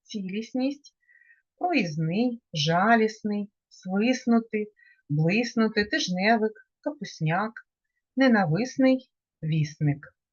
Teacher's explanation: відбувається спрощення тобто приголосні д Та т випадають